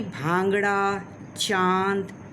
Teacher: अनुनासिक, जिसको हम चंद्र बिंदु कहते हैं, यह नाक एवं मुंह दोनों से हवा निकले, उसे हम अनुनासिक कहते हैं।